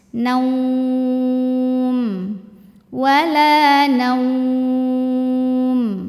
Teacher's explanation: setelah fathah ada wau mati maka ini Na monyong bibirnya kayak mau bilang wau kayak bilang wa ya Na na n